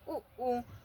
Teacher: ओष्ठ स्वर होते हैं उ ऊ जो ओठ से बोले जाते हैं।